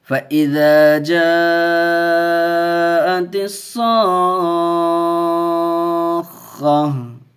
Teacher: حرف مد کے بعد حمزہ اسی کلمے میں ہے تو اس لیے 4 الف کھینچ کے پڑھیں گے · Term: مد متصل